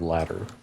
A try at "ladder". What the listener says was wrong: You rolled the D in the same way that you roll the R.